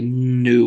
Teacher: You can kind of hear the nostrils in your voice, or the nasal cavities kind of hum when you say nu or make a n sound. Your nose vibrates a little bit. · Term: nasal consonant